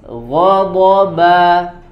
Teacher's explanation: Ba-nya tipis, ba. Jadi ghain dan dod itu tebal, kemudian ba-nya tipis.